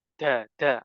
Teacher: huruf Dal itu seperti orang Jawa mengucapkan huruf Dal tanpa Hames kalau orang Jawa pakai Hames ya ada hamesnya da da ada udaranya tapi yang betul makhrajnya sudah betul tapi udaranya dihilangkan nah ini